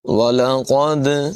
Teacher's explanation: دال میں قلقلہ کریں گے، آواز ٹکراتی ہوئی محسوس ہوگی